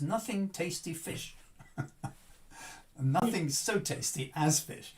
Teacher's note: we don't need to stress those weak syllables and we just kind of half pronounce them and they get squeezed in